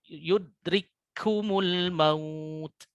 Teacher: huruf kaf walaupun mempunyai sifat hamas, karena ini ada tasydid, ada idgham, maka hamasnya menjadi hilang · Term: idgham mutamatsilain